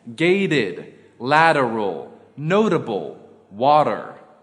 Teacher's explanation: T becomes a tap in the middle of a word examples gated lateral notable water rule four of is pronounced of